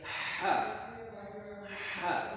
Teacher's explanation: یہ middle of throat سے ہے، آپ کے حلق کے درمیان سے ادا ہوتا ہے، اور یہ آواز جو ہے وہ رگڑ کے آتی ہے